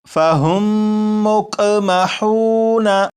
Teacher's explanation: لیکن یہاں پر کیونکہ میم ساکن کے بعد دوسری میم ہے تو اب ان دونوں لفظوں کو جب پڑھیں گے تو یہاں پر غنہ کر کے پڑھیں گے اور پڑھا جائے گا فَهُمْ مُقْمَحُونَ۔